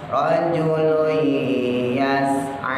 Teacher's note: hanya jangan panjang-panjang, cukup 2 harokat ya, karena mat asli dia.